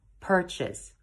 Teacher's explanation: it's actually pronounced purchase purchase with the emphasis on per · Purchase with the emphasis on per. Purchase. If you prefer the British pronunciation, then remember to drop the R.